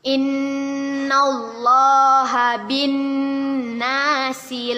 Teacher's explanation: Nun bertasydid kita gunnahkan, kita dengungkan 2 harokat